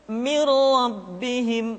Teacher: nun mati tanwin dimasukkan pada huruf lam dan rok yang dihadapannya tanpa harus ditahan